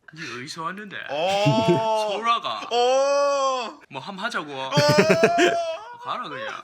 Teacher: a quick wave-like intonation, while standard Korean is more flat and smooth